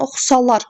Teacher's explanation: Oxusalar sözündə oxusalar sonuncu hecəyə düşür.